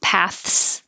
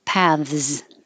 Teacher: Either way is fine, but you have to have the TH or it will sound like pass. So it can be voiceless TH and a voiceless S, paths, or it can be the voiced V and the voiced Z, paths. Either way, I think the first one's easier, paths.